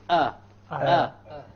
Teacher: There is nothing below this except that it's a part of the windpipe. So the lowermost part of the throat, this is where the hamza originates from.